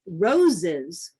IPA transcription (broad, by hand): roʊ.zɪz